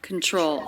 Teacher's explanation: Control. Stress on the second syllable. TR cluster is often pronounced as CHR, and I do hear this lightly as a CH rather than a T sound.